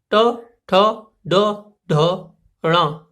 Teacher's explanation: चा से जब आगे बढ़ते हैं हम पहुंचते हैं ट वर्ग पर, और यहां तालु से जब आगे बढ़ते हैं तो यहां पहुंचते हैं मूर्धा पर। तो टा वर्ग के जितने भी व्यंजन हैं, ट, ठ, ड, ढ, ण, ये सब कहलाएंगे हमारे मूर्धन्य व्यंजन।